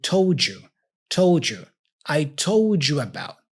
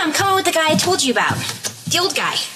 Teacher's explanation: when you have the D like told and the Y for you in this case like this Dy combination the sound is J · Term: connection